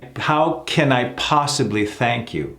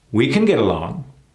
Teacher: Sometimes the can is reduced to a kin.